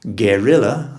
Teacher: with the two l's together giving us a y sound but on entering the english language it's got a hard l sound at the end of it